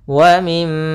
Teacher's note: Di sini ada mim berharakat tasydid, maka hukum tajwidnya kita namakan dengan gunnah. Cara membacanya yaitu suara mimnya ditahan dulu. Wa mim sepanjang 2 harakat.